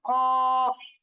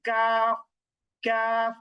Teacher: তাহলে জিহ্বার গোড়া তারপর উপরের তালুর সঙ্গে লাগিয়ে হচ্ছে কফ, আর জিহ্বার গোড়া হতে একটু আগে বাড়িয়ে তারপর আবার উপরের তালুর সঙ্গে লাগিয়ে হচ্ছে কাফ, কাফ। তাহলে কাফ সহজ, কিন্তু কফ একটু জিহ্বার গোড়াটা উপরে তালুর সঙ্গে লাগাতে হবে।